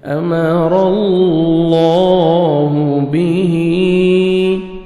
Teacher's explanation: खड़ा ज़ेर के बाद नेक्स्ट कलमा के स्टार्टिंग में हमज़ा आ रहा है तो मद्दे जायज़ 3 से 4 सेकंड हमें एक्स्ट्रा मद करनी है